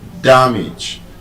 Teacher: But it's a verb, a bisyllabic verb, but it's an exception to that rule. It is stressed on the first syllable.